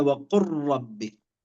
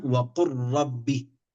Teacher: إذا جاءت اللام وبعدها حرف الراء فهنا الإدغام كامل